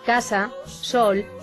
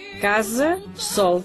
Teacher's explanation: o s mayoritario en galicia e apical